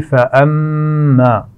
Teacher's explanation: فَأَمَّا میم پر شد ہے تو یہاں غنہ کیا جائے گا